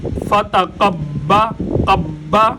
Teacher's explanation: मुशद्द हरफ को दो दफा पढ़ा जाता है। एक दफा पिछली हरकत के साथ मिलाकर पढ़ते हैं और एक दफा अपनी हरकत के साथ। तो गोया हम एक दफा कौफ के साथ बा को मिलाकर पढ़ेंगे और एक दफा बा की अपनी हरकत के साथ बा को पढ़ेंगे।